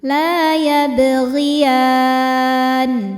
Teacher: Maka ketika berhenti di sini ya-nya boleh panjang 2, 4 atau 6 harokat asal konsisten dalam sekali duduk. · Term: mad arid li sukun